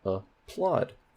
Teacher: that plot has primary stress